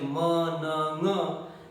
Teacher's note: And during the production of the nasal sounds like ma, na, nga, this uvula, it comes down, and air equally simultaneously goes through the nasal passage as well as oral passage. and the sounds comes out as nasal